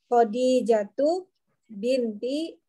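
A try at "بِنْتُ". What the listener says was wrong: Bintu bintu, bukan binti. Bintu.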